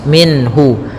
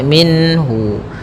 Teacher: Ha termasuk huruf-huruf yang kita keluarkan dari alhalq yaitu tenggorokan kita maka suara nunnya harus jelas minhu tidak boleh ditahan tidak boleh minhu ya tidak boleh Minna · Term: izhar halqi